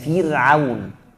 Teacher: Kalau ra-nya sukun, sebelumnya ada kasrah betul, tipis kayak Fir'aun.